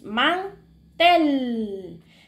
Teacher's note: vamos a ver que en tel nosotros tuvimos que levantar la voz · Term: sílaba tónica